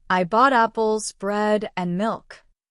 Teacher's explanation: For example, I bought apples, bread, and milk. My voice rises on the first items, apples and bread, but falls on the last item, milk. That falling tone on the last word shows the list is finished.